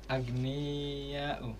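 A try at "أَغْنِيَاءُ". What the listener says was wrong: Betul ya, tapi agak dicepatkan aghniya'u. Yang panjang itu dianya.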